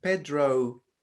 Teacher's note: in english you would have the o and then you have a little bit of a u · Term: diphthongs